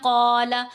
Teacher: جیسے ہم پڑھتے ہیں قال، قاف ان حروف میں شامل ہے، جب اس کے ساتھ الف لگ جائے گا تو وہ الف بھی پھر موٹا پڑھا جائے گا